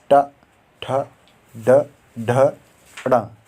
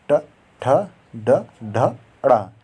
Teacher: मूर्धा और जीभ के स्पर्श से बोले जाने वाले व्यंजन या जीभ के पतले भाग और तालु के अगले भाग के स्पर्श से बोले जाने वाले व्यंजन मूर्धन्य व्यंजन कहलाता है।